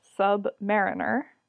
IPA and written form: ˌsʌbˈmæ.ɹɪn.ɚ (sub-mariner)